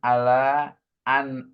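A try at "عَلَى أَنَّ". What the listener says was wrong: Ala anna kasih tasdid.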